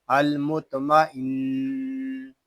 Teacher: نون میں شدد ہے اس کو غنے کے ساتھ پڑھیں گے